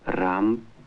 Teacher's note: although there is an R sound in Russian, it is different from the American R. The speaker says, Ramp. for ramp, trilling his R.